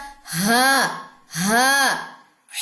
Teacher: یہ اقصی حلق سے ادا ہوتا ہے یعنی کہ گلے کا سب سے اندرونی حصہ, سب سے نیچے والا حصہ